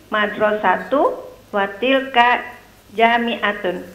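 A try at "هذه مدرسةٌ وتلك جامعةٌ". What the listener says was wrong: Ya, madrasatunnya di tanwin. Hadihi madrasatun watilka.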